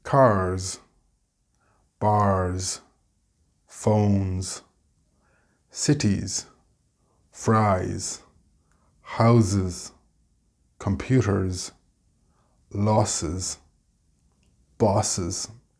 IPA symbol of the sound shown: z